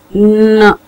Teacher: इसमें हम जो है सबसे पहले अपना जो सॉफ्ट पैलेट है उसको थोड़ा नीचे करते हैं जिससे हमारा नेजल कैविटी जो होती है वो रेजोनेट करती है, मींस हिलती है थोड़ा सा, और हिलती है तो साउंड्स प्रोड्यूस होती हैं.